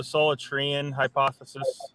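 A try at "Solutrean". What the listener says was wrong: I think you're pronouncing that wrong, though, man. I think it's Solitrian. The wrong emphasis on the wrong syllable.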